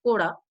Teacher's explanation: coda with a mid-tone, which means leper